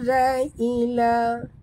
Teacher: za sini jaga makhrajnya di hujung lidah saja, ya, ringan